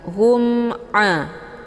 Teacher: Cara bacanya, mimnya dibunyikan secara jelas atau jelas bunyi m-nya. Cukup ditekan saja, tidak perlu ditahan. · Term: idhar syafawi